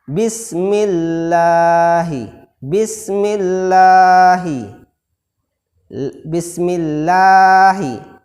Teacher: Maka dibaca tipis, tidak penuh rongga mulut kita.